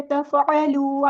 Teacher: تا باریک ہے، لائٹ لیٹر ہے، فا بھی باریک ہے